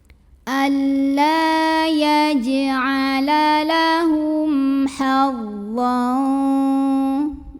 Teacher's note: kebetulan adalah huruf H maka cara baca mim sukunnya ini adalah dibunyikan dengan jelas atau izhar jelas bunyi m nya tidak perlu ditahan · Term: izhar syafawi